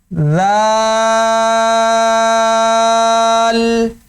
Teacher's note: جیسے ہم نے ثا پڑھا تھا نرم، اسی طرح ذال کو بھی نرم پڑھیں گے، ٹھیک ہے؟ کیسے کہ زبان کی نوک سامنے والے جو بڑے دانت ہیں اس کو ثنایا علیہ کہتے ہیں، اس کے کنارے پر لگے گی زبان، اور نرمی سے ادا کرنا ہے ذال